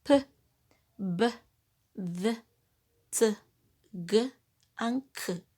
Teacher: Yes, this is opened, and the air that was inside the mouth is abruptly released, producing an explosion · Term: plosive consonants